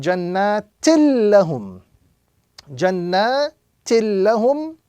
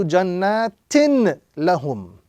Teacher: So instead of saying jannatin lahum, we join directly to the tashdid or to the letter that has the tashdid, which in this case is the lam. So we will be reciting jannatil lahum.